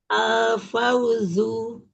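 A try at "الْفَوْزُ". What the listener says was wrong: Ya, lebarin lagi lamnya. Al-fauzu. Lamnya lebar. Dua tepi lidah secara bersamaan. Jadi lebarnya itu kurang lebih selebar gigi taring kita kanan kiri tuh. Lebar lidahnya yang ditempelin ke gusi atas. Jadi bukan ujungnya ya, bukan ujungnya aja. Karena kan dua tepi lidah, dua tepi lidah ya. Nah, jadi selebar gigi taring. Nah, yang mana gigi taring tuh lihat ya gigi taring tuh ya di. Nah itu selebar itu.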